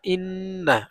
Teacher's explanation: নুনের উপরে তাসদিদ ওয়াজিব গুন্না